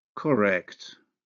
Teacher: the alveolar nasal becomes velar when followed by the velar consonant, K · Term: nasal assimilation